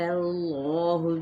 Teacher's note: اس میں جلالہ کا لام موٹا کر کے ادا کیا جائے گا، یعنی تفخیم کے ساتھ کیونکہ پیچھے زبر ہے۔